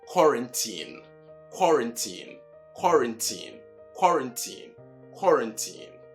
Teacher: just like most words beginning with QUA, it is not qua, but ko. Then the RAN is run, and not how you pronounce it.